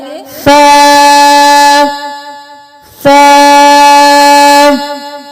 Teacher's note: जुबान को ऊपर वाले और नीचे वाले दांतों के दरमियान रखकर सा अदा करेंगे। सा सा।